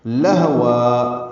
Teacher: لام کو ہا سے ملانا ہے، لام باریک پڑھنا ہے، ہا اقصی حلق سے نکالنا ہے، اس میں ہمس ہوگا لہ، یعنی اس میں سانس کی آواز جاری رہتی ہے۔